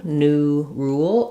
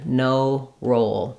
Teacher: for ooh very tight for o a little more open the O is also a div flong I'm sliding so as